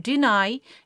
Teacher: In a word deny, the second syllable called nigh takes its own stress mark. The secondary stress. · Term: primary stress